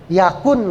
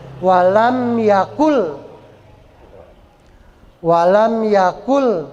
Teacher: nun mati setelah nun mati ada huruf lam maka Nun matinya masuk ke huruf lam enggak kedengaran n-nya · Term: idgham